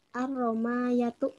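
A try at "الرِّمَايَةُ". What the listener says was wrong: Ar-Rima, pakai kasrah ya. Ar-Rimayatu.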